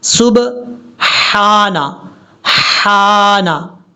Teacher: با کے بعد جو ہے یہ ہا ہے، باریک ہا